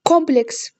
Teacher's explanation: Kompleks. Deməli sözündə vurğu birinci hecaya düşür.